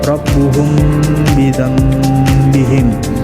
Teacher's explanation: Nah, di sini hukum mim matinya itu terdapat pada kata rabbuhum bidzambihim. Di sini ditekankan mimnya selama 3 detik, 3 harokat. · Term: ikhfa syafawi